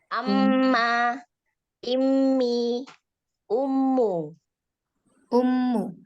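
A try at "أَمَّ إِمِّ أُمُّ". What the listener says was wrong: Dan ini panjangnya samakan ya. Amma, immi, ummu. Disamakan. Karena panjangnya sama.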